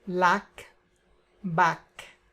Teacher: open A, but with the lips more like in a smile